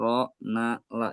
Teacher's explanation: Itu makhrajnya sama. Huruf ro, huruf nun dan huruf lam, yaitu ujung lidah dengan pangkal gigi seri atas